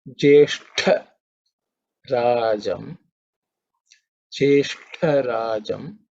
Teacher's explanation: This is the second letter in the ta varga, so it has to be with extra air.